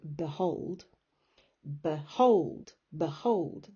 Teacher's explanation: So if you look at the word behold, behold, behold, the B bit, you almost don't even pronounce the B, behold. You say behold, and the emphasis, the stress is on hold.